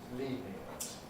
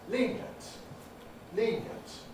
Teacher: And they therefore become the corresponding semi-vowel, or in the case of syllabic consonants, the corresponding non-syllabic consonant. So we can say lenient with 3 syllables, lenient. But we can also say lenient, lenient with 2 syllables.